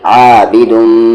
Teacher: میم پہ تشدید ہے, غنہ کریں گے یعنی آواز کو ناک میں رکھیں گے